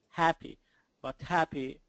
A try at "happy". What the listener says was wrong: It still sounds like a short A, but it sounds like a non-native short A, kind of like a lazy short A. Not exactly an E, but not enough.